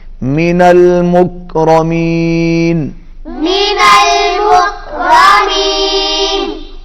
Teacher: کاف کو ہلائیں گے نہیں، را کو پر پڑھیں گے